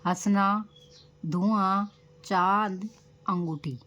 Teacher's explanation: चांद, अंगूठी, इन सब शब्दों में हमारे नाक और मुंह से हवा निकलती है, तो अर्थात ये सब अनुनासिक होते हैं।